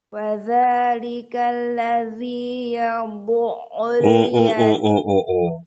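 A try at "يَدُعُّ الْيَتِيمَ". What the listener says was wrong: Itu bod. Ini dal. Yadu'ul yatim.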